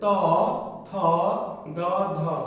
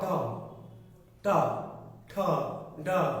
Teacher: ত থ দ ধতে সাধারণ অগ্রভাগ আর ট ঠ ড উল্টানো।